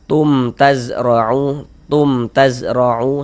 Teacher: Kita baca jelas tak berdengung. Baca pendek saja. · Huruf ro memiliki harakat fathah dibaca tabkhim. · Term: izhar syafawi